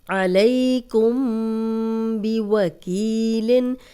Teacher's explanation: جزم والی میم کے بعد با آ جائے تو غنہ کرنا ہے